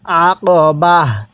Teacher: ওয়াকফের সময় আমরা এই তাটাকে হা বানিয়ে দিব।